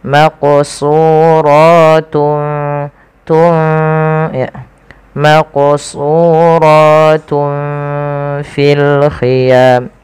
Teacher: Nah, ikhfa di tengah-tengahnya. Jadi nunnya tidak terlalu dibaca dengan jelas, tapi dia disamarkan kepada huruf selanjutnya. Maka di sini samarkan huruf ta kepada huruf fa langsung.